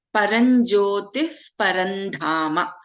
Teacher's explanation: And in Parandhama, we have dha as the Mahapranakshara.